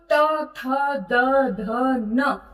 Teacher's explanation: त, थ, द, ध, न ये पांचों वर्ण दांतों को छूकर आप तक पहुंचते हैं ये आवाज। तो इसलिए इसको हम दंत उच्चारण स्थान कहेंगे। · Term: त वर्ग